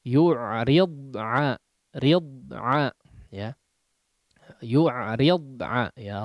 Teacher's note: rakhawahnya huruf dhad hanya di dalam mulut saja ya, tidak mengeluarkan udara yang udara yang deras sehingga tidak keluar.